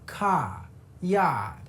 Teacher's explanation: We're going to drop those final Rs. ca. Number two is that the a sound in words like car and yard shifts to a.